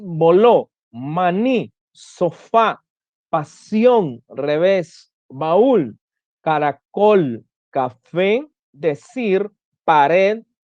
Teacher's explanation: Esas palabras llevan el acento en la última sílaba. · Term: palabras agudas